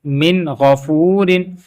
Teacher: میم زین مین، غین زبر غا، من غا، فا پیش واو فو، من غافو، را دو زیر رن، من غافورن. اب نون ساکن کے بعد غینہ حروف حلقی میں ہے تو یہاں پہ غنہ نہیں ہو رہا